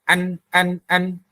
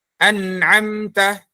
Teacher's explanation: Nah, jadi nun ini nanti dari segi makhraj tempatnya itu ya, tempat hurufnya itu dia ada di ujung lidah yang menyentuh gusi depan yang atas, artinya menyentuh gusi atas. Nah, tapi nanti ketika dia dari segi suaranya dia nggak keluar dari al-jawf, nggak keluar dari rongga mulut, tapi keluar dari rongga hidung. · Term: huruf nun